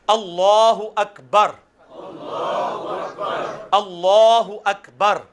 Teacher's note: لام کے اوپر کھڑی حرکت ہے جو کہ ایک الف یعنی 2 حرکات کے برابر کھینچی جائے گی · لام کو پر پڑھنا ہے کیونکہ اللہ کا لام جو ہے وہ پر پڑھا جاتا ہے، تو میں جو جس طرح پروناؤنس کروں گا آپ نے اس کے پیچھے ایک دفعہ پروناؤنس کرنا ہے، تو انشاءاللہ آپ کے لیے آسانی ہو جائے گی۔